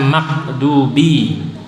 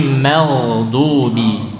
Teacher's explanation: Ghoin jangan jadi qaf, bukan makdubi, tapi meldubi, dialirkan. Juga jangan jadi kha, mel, atau jadi ain ma'dubi ya.